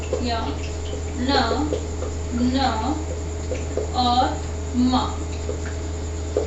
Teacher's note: यानी जिनका उच्चारण करते समय हमारी जो ध्वनि है वो कहाँ से निकलती है? नाक से निकलती है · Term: नासिक के व्यंजन